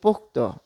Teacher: পোক্ত উচ্চারণ যখন আমরা বলছি তখন বিশ্লেষণ করলে দেখা যাচ্ছে যে ধ্বনিগত যে বিশ্লেষণ সেই ক্ষেত্রে কিন্তু পোক্ত ত এর পরে কিন্তু অ ধ্বনিটি চলে এসেছে